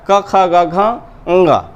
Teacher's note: तो कंठ है। कंठ इसलिए कहा गया क्योंकि इनका उच्चारण कंठ से होता है